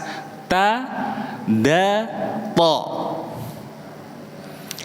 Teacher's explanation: Jadi ujung lidah ketemu dengan perbatasan gigi dan gusi atas. Ta, da, to.